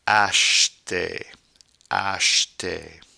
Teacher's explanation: notice that CH here makes a sh sound, not a ch